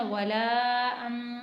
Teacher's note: वाव को नहीं खींचना लाम को तीन हरकत के बराबर खींचना · اگلی آیت دیکھتے ہیں، ولا انتم عابدون، ولا انتم عابدون، واو زبر وا، لام الف مد زبر لا، ولا، حمزہ نون زبر ولا ان، واو کو نہیں کھینچنا، لام کو 3 حرکت کے برابر کھینچنا